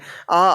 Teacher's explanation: आ आपका कंठ के अंतर्गत आता है